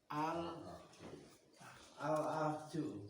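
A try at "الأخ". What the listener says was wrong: Ahu, ha ini kho ya. Ini kho, ini kho bukan jim Pak.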